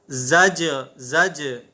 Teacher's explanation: جیم حروف قلقلہ میں سے ہے، اس لیے ہم نے اسے قلقلہ کے ساتھ پڑھا